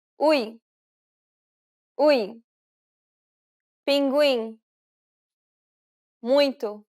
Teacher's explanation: since it's a nasal diphthong, you want to pronounce it through the nose as much as possible.